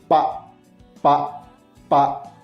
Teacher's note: esse lugar pode ser os lábios e a maneira pode ser segurando o ar e soltando de uma vez só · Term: plosiva